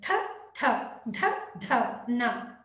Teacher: ಹಲ್ಲುಗಳ ಬಳಿ ಹುಟ್ಟುವುದರಿಂದ ದಂತ್ಯ ಅಕ್ಷರಗಳು